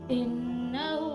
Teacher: نون مشدد ہے تو یہاں پر ہم ناک میں آواز لے کر جائیں گے